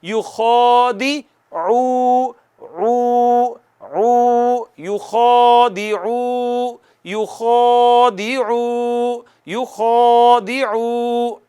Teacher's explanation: اس کے بعد عین ہے، عین ہوتی ہے ادا وسط حلق سے، اس کے اوپر پیش ہے، پیش ہونٹ گول کر کے ادا ہوتی ہے